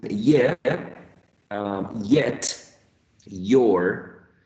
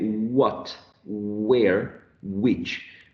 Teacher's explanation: in the production of glides or semi-vowels, I would say that in general, both are voiced, okay? When we say, for example, ye, as in yeah, yet, your, or when we say what, where, which, there is vibration of the vocal folds, so they are voiced, okay?